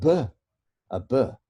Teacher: So make it with your two lips. It's got to be a plosive and it's got to be voiced. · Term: Voiced bilabial plosive